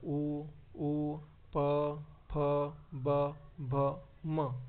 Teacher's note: आपले दोघे होट काय होतात एकमेकांना स्पर्श करतात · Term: ओष्ट